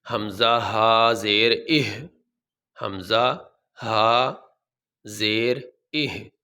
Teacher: یہ پہلے حمزہ کے نیچے زیر ہے، آگے ہا ساکن ہے۔ ہا ساکن کو یہ حمزہ کے ساتھ ملا کے پڑھیں گے